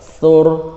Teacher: Perhatikan ro-nya itu di waqaf, maka ro-nya itu tebal lah